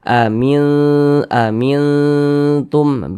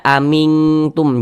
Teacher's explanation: lebih condong berbunyi n tapi dia disamarkan